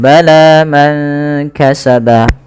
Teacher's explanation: panjangkan huruf la-nya sepanjang 2 harakat karena la di sini ada alif kecil yang datang setelahnya dan ia berada di atas huruf ya. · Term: mad tabi'i